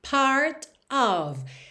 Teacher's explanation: O T de part ficou rarara para já juntar na vogal